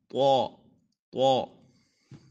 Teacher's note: طا، اس کا مخرج یہ ہے کہ زبان کی نوک اور اوپر کے دانتوں کی جڑ سے ادا ہوگا. ایک زبان کا نیچے والا حصہ، اس کو زبان کو سرا کہتے ہیں، اور اوپر جہاں پہ مل رہی ہیں گوشت وغیرہ تالو وغیرہ، تو زبان تو اس کو جگہ کو کہتے ہیں دانتوں کی جڑ.